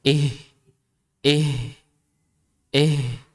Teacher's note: Ketika H yang keluar dari dada, dia seakan-akan keluar nafasnya tuh lebih banyak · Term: mengeluarkan huruf ha dari dada